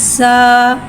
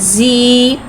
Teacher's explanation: ज़ा को एक अलिफ यानी 2 हरकत के बराबर खींच के पढ़ेंगे। ज़ा में सिटी को ज़ाहिर करके पढ़ेंगे। ज़ा के ऊपर खड़ा ज़बर है, खड़ा ज़बर को एक अलिफ यानी 2 हरकत के बराबर खींच के पढ़ेंगे और ज़बर को मुक़ल के अदा करके पढ़ेंगे।